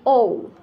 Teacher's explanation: ওকে, তারপর এই যে ও, ও দুইটা ঠোঁট, হ্যাঁ দুইটা ঠোঁট মিলে এই মানে গোলাকৃতির হবে, উপরের দিকে গোলাকৃতির হয়ে যাবে